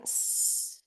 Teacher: fonemas sordos en los que no ocurre una vibración de las cuerdas vocales, como en el caso de la S